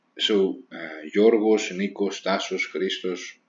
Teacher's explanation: first names that are only two syllables they are stressed on the second from the end and the end knows soos Nikos tasos Christos etc etc now · They are stressed on the second from the end, and they end in os.